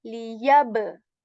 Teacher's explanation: I'm bouncing back the sound of ba here because ba is a letter of Qalqala.